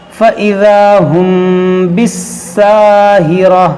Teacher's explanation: میم ساکن کے بعد با ہے, تو یہاں پر ہوگا اخفاء شفوی, یعنی کہ یہاں پر ہم غنہ کر کے پڑھیں گے